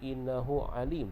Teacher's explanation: mad silah qasirah, panjangnya 2 harakat